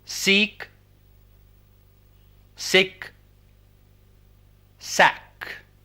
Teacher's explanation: these are front vowels